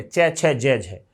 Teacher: जिनका उच्चारण करते समय जीभ स्पर्श भी करेगी और संघर्ष भी करेगी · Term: स्पर्श संघर्षी